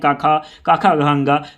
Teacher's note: क वर्ग का उच्चारण स्थान कंठ से होता है